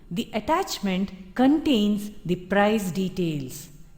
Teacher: the emphasis is on the price details contained in the attachment